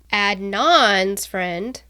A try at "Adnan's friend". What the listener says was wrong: The wrong emphasis on the wrong syllable. Yeah, Adnan's friend, Jay Wilds.